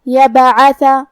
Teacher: کلمت یبعث میں حرف البا پہ جزم ہے. یہاں ہمیں با کو قلقلہ سے پڑھنا ہے، اور قلقلہ کا معنی ہے حرف ساکن کو ہلانا، تو ہم حرف البا کو ہلاتے ہوئے یہ کلمہ کو پڑھیں گے.